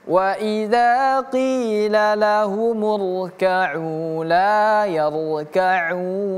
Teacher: Ka'u di sini panjang 2 harokat. Masuk ke yarka'un tidak lagi menjadi 2 harokat tapi berubah menjadi 4 harokat. Yang tadi hanya sekedar mad tabi'i saja atau mad asli saja, berubah dia menjadi namanya mad arid lisukun.